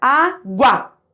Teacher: u a certo você não fala agua você fala a gua a força tá no A então o a vira uma vogal e o u uma semivogal